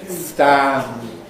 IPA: stæ̃m